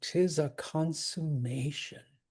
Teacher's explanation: technically con also gets a mark for a stress